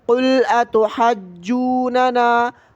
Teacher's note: ایک غلطی آپ کی ٹھیک ہو گئی کہ اس کو تشدید کے ساتھ پڑھنا ہے، اور دوسری بہت سے لوگ غلطی یہ کرتے ہیں کہ یہاں پر مد نہیں کرتے، ہا الف مد زبر ہا پر مد نہیں کرتے، فوراً ہا کو جیم کے ساتھ ملا لیتے ہیں